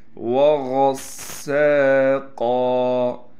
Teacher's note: غین کو موٹا کرنے کے ساتھ غین کو سین سے ملائیں گے، سین میں سیٹی بھی ادا کریں گے